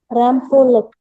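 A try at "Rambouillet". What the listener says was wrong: Yeah. Not pullet. It's a French name.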